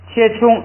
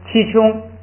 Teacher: 把那个前边的开元音读的闭一点